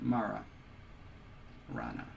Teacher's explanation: it starts off as a retroflex tap but then it just kind of restricts a little bit